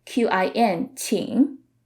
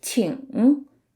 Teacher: In southern parts of mainland China, sometimes people would drop the g at the end and just say it like qin